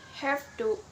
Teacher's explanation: have to with an F sound rather than the V sound, i.e. H, A, F, T, E, as the voiced fricative is followed by a voiceless consonant. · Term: assimilation of voice